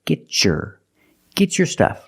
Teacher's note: But because I have a T before a Y making the Y sound, I can change the T to a ch sound like chicken and say get your.